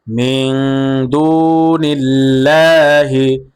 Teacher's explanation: আল্লাহ শব্দের লামের পূর্বে জের আসছে। এ কারণে আল্লাহ শব্দের লামকে বারিক করে পড়তে হবে।